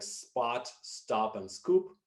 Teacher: pronounced without aspiration after initial S, as in words like spot, stop, and scoop.